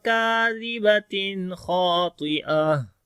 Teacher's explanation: ہا کے اندر صفت ہمس آ جاتی ہے، سانس جاری ہوتا ہے